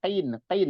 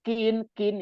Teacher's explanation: makhrajnya itu qafnya paling dalam, maju sedikit kaf